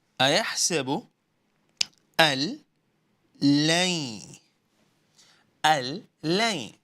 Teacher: Well, we are merging noon with the lam. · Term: idgham